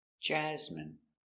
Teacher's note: Stress the first syllable.